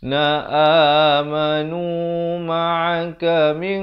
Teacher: ikhfa hakiki dibacakan samar 2 harakat dengan tebal kerana qaf merupakan huruf isti'la